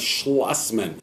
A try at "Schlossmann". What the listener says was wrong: No, people keep talking with the slush. The slush is with the snow. The Schloss is with the car dealership. It's Schlossmann.